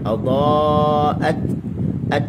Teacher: hamzah bertemu huruf ta, hujung lidah bertemu dengan gusi, ni makhraj bagi huruf ta. Dia pertemuan yang sempurna.